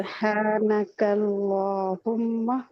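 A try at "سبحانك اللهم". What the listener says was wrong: اچھا ماہ جو نہیں ماہ نہیں ہوگا ماں ہوگا صرف. ٹھیک ہے ہاں ایڈ ہو رہا ہے آپ کے یہ نہیں ہونا چاہیے. سبحانک اللہم ٹرائی کریں.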